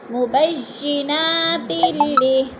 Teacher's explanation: تلی میں ادغام ہو رہا ہے